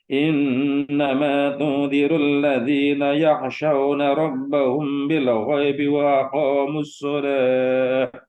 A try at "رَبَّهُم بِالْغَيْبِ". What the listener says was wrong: coba tadi mim ketemu Mbak kurang tuh nahannya tuh. Ya coba prakteknya kurang tadi. Harus 2 harokat.